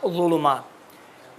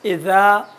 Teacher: ضین موٹا پڑھا جاتا ہے، اذا تھوڑا سا ہلکا پڑھا جاتا ہے